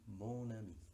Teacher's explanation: la N de mon aparece y se enlaza con la A de ami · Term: liaison